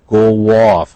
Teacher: You hear the W in there